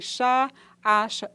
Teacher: Apresentamos também o ch, fricativa alvéolo palatal desvozeada